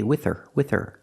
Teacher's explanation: The H is silent because her is not an important word. It's not stressed. We don't pronounce the H.